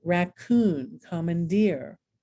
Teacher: the oon and ear syllable is accented